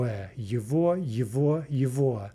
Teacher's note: note that the g is being pronounced like a v